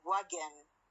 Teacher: the N here is not a syllabic one. It is pronounced as schwa-N.